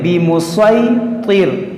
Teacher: اس سین کو ہم صاد پڑھیں گے, سین نہیں پڑھیں گے